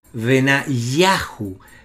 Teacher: no hay acento en la sílaba Who sino que la sílaba acentuada justamente es ya · la sílaba acentuada en los nombres teofóricos que terminan en Yahu es Yah